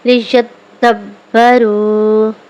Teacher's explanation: دال اور با حروف کلکلہ میں سے ہے، یہ خوب دباؤ کے ساتھ جماؤ کے ساتھ ادا ہوگا